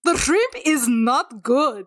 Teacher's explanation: I really like the rolled R there.